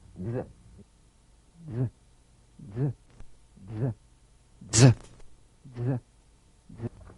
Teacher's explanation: Use a light staccato treatment without sustaining the Z. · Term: resonant staccato z